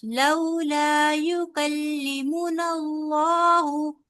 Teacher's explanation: मु लंबा नहीं करना मीम पेश मु है